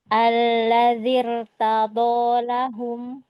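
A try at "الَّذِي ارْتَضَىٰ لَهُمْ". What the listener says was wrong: Ditahan sedikit lagi tafkhimnya. Sudah angkat pangkal lidahnya belum?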